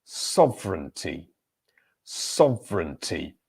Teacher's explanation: So the stressed syllable here is the first